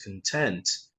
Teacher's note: this is content stress on the second syllable